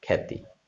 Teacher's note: জ ফলাযুক্ত বর্ণের পরে আকার থাকলে আকারের উচ্চারণ এ হবে, আ হবে না। আমরা কয়েকটি উদাহরণ দিতে পারি, যেমন ধরো, একটি শব্দ লিখেছি, শব্দের প্রথম হচ্ছে খ, তারপরে কি জ ফল এসেছে, এরপরে আকার এসেছে।